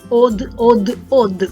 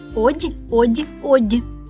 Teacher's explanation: дум каже твердо од од од а дім повторює за ним м'яко одь одь одь